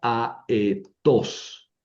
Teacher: si no hay contracción, ¿verdad? Las dos vocales se pronuncian separadamente, ¿verdad? No forman diptongo.